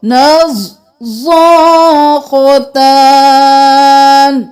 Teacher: زاد موٹا، خا موٹا